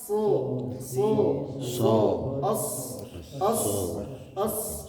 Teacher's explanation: huruf sod ujung lidah menempel ke gigi seri bagian bawah. Bukan di ujung gigi serinya, tapi di belakang gigi serinya.